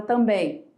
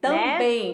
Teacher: O M, né, contém um som de I.